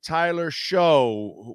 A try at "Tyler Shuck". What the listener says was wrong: Well, Tyler Shuck. It's pronounced Shuck, by the way. It's not Show. it's a tough one to pronounce.